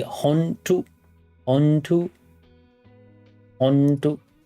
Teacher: the sound is made by raising the back of the tongue to the top of the mouth and saying un